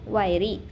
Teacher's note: The word is pronounced wiry with the stress on the first syllable.